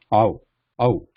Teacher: the lips start in the wide open and they fall back to a smaller circle